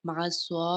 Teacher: سواد کے اوپر کھڑی زبر ہے، اس کو ہم ایک الف کے برابر لمبا پڑھیں گے